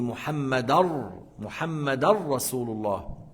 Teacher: lorsqu'il y a le lam et le ra, on dit muhammadar rasulullah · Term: idgham